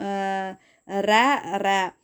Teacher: நாவோட நுனி வந்து மேல் அன்னத்தோட முதல் பகுதியை தொட்டு வர்றதுனால ரகரம் தோன்றுது இது வந்து இடையெழுத்து அப்படிங்கறதுனால இதை வந்து இடையின ரகரம் அப்படின்னு சொல்றோம் அடுத்து